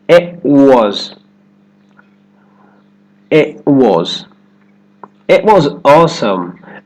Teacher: It. The tongue goes up for the T. At the end of the word, it holds there and straight into the W sound for was. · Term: held T